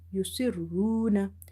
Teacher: if there is a dama on ra, ra is heavy. Yusirruna. Waw is madda because before waw sakin you have dama.